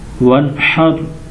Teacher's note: یہاں غنہ نہیں کریں گے کیونکہ نون ساکنوں کے بعد حا حروف حلقی میں سے ہے تو غنہ نہیں ہوگا